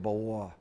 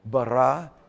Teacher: There are Hebrew speakers that bawa. They put a little wa in the sound of the R's.